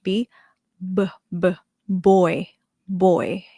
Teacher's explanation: So more voice for B sound in English